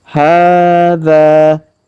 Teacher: huruf ha kita panjangkan 2 harokat karena alif kecil di atasnya. Hadza, huruf za kita panjangkan 2 harokat karena alif di depannya.